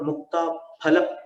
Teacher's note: फ में दोनों ओठ मिलाना है, फ नहीं बोलना है।